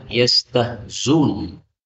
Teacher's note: boleh dibaca yastahzun, berarti dilenyapkan hamzahnya sehingga zainnya menjadi dhammah, yastahzun.